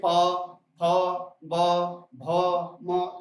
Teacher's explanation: इनको बोलते समय हमारे ओंठ क्या आपस में चिपक रहे हैं, इसलिए इनका स्थान क्या हो गया, ओष्ठ हो गया।